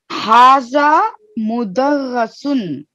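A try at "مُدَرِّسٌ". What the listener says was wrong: Mudarrisun. This tashdid. If you'll see vowel below tashdid, it is kasra. If you see a vowel up on the top of tashdid, it is called fatha. So in this case, it is kasra.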